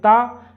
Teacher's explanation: जो ता वर्ण है वो हमारा दंतव्य वर्ण है